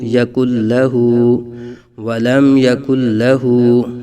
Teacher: لام کے اوپر زبر ہے، بغیر کھینچے بغیر جھٹکا دیے پڑھیں گے